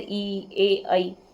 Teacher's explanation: अग्र स्वर जो बिल्कुल आगे मुंह के आगे से जिसमें से आवाज निकलती है